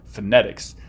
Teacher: the second syllable so phonetics more emphasis more emphasis on the second syllable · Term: stress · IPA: fənɛtɪks